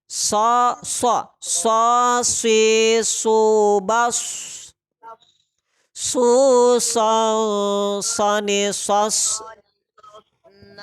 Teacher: Sod itu hamas sifatnya. Jadi ada safir, suara desis. Tempat keluarnya dari ujung lidah dengan ujung gigi seri bawah.